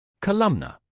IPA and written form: kə-ˈləm-nər (Columnar)